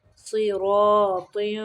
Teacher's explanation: صوت کو موٹا پڑھیں گے، را کو بھی موٹا پڑھیں گے